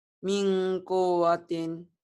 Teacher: Kenapa min kuwatin harus ada engnya? Karena nun mati bertemu qaf. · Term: ikhfa